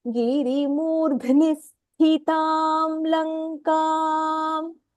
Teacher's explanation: the dha is mahapranah then there is a dvitva sakarah there and then sthitam the first tha is mahapranah